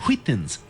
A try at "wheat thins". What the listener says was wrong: Why are you putting so much emphasis on the H?